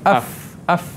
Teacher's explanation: Gigi atas bertemu dengan bibir bawah